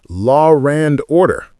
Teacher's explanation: Intrusive R. In some accents, R appears between vowels even when not written. Law and order becomes law rand order.